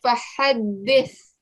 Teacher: It looks different from a th as well, and it has like an S sound to it. With a th, you're getting the tip of your tongue and you're placing, or you're touching it to the top teeth, but the edge, the bottom of the top teeth